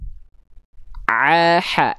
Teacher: Kalau dia lebih masuk sedikit lagi ke sini, ini namanya wastul halqi. Wastul halqi itu tempat keluarnya huruf ain dan ha kecil.